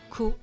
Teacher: Remember the T at the end of comment is silent.